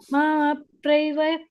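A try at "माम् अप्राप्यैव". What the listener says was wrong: ಪ್ರಾಪ್ಯವ ಬರಬೇಕು ಕ್ಲಿಯರ್ ಆಗಿ ಕೇಳಬೇಕು ಅಪ್ರೈವ ಅಲ್ಲ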